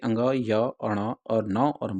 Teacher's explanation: प्रत्येक वर्ण वर्ग का पांचवा वर्ण जो है अंग, य, अण और न और म जो है ये नासिकी व्यंजन कहलाते हैं, क्योंकि इनके उच्चारण में वायु जो है मुख के साथ साथ नाक से भी निकलती है